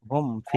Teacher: মিম সাকিনের পরে ফা এসেছে, তাই মিম সাকিনকে বিনা গুণনায় জাহির করে পড়তে হবে, একে ইজহারে শাফাবি বলা হয়।